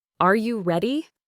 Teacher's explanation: Try to make your voice go up at the end, as if you're asking for an answer, a confirmation. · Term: rising voice